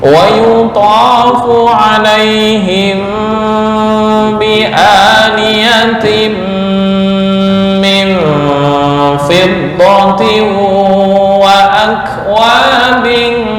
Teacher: Him bi mim mati bertemu ba, bacaan ikhfa syafawi, dengung ditahan, jangan buru-buru.